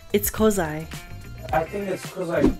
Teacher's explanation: uses connected speech in the sentence. He uses the reduced form of because, which is cause.